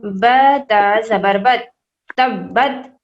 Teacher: دونوں inner lips کو ہم ٹچ کریں گے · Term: حرف با